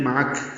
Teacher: سے پڑھیں گے، معک یہاں پہ وقف کر دیں، رک جائیں، معک کاف ساکن پہ ہمس ہوگا، ملائیں گے تو جیسے میں نے پڑھا معکا کاف پر زبر